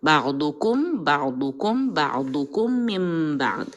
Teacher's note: بعضکم میم کے اوپر شدہ ہے تو میم کو تھوڑا ٹائم دیں گے